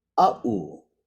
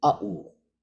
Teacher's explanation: a, short a, glottal stop, u